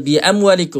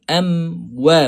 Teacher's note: Mim kita tutup sahaja. Tak perlu muncung lagi. Wau baru kita muncung.